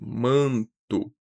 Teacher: Em manto, a gente tem o dígrafo vocálico AN. AN, o A que é nasalizado